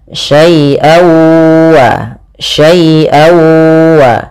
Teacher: Kemudian pada lafal an ketemu wa, nah ini sama sebagaimana hukum daripada nun mati ketemu dengan nun, yaitu suara tanwinnya masuk kepada huruf waw. Jadi awalnya syai'an ketemu waw, dibaca syai'awa, syai'awa.